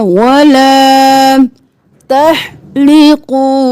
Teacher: हा गले के दरमियान से कौफ मोटा और वाव मद्दा खींचेंगे तहलिकू रुऊसकुम, रो मोटा और हमजा पेशवा